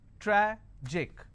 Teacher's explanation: Tragic, tragic, I will stress on tra.